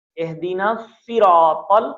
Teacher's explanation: ای کی آواز کے ساتھ پڑھیں بنا کھینچے ہوئے · را کو موٹا ادا کریں، صراط کا تو موٹا ادا ہوگا ہی